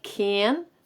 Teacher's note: es una frontal bastante abierta pero no tan abierta como la nuestra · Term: a frontal inglesa